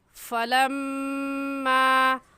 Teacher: फलम्मा में मीम मुशद्दद है और मीम मुशद्दद पर हमेशा गुन्ना होता है, सो इस वजह से यहाँ पर गुन्ना करके पढ़ेंगे।